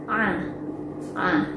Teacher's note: pengucapan huruf Ain ini disertai dengan menurunnya lidah dari langit-langit mulut